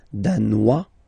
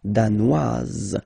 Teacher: Danois, don't pronounce the final S. Danoise, here you pronounce it.